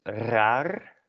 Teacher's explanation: it's made by trilling your uvula at the back of your throat